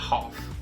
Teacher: Em inglês britânico, esse A vai ter um som mais de A aberto